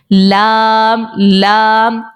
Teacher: मसोड़ा के लग रहा है आप देख रहे होंगे लाम लाम जुबान का किनारा हमारे दवाह से लेकर सनाया तक के जो दांत है उनके मसूड़ों के साथ जाकर लग रहा है तो यह लाम निकल आता है